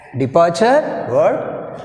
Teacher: In this word weak prefix is d, that's why we have stress on second part of the word departure.